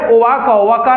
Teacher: ओठ खुलता है लिप्स तो व का उच्चारण होता है दंत और ओठ से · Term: दंत ओष्ठम